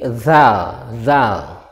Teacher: Nah, itu. Ada suara berdesis dari ujung lidah bertemu dengan ujung gigi dan ada suara berdesis. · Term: huruf za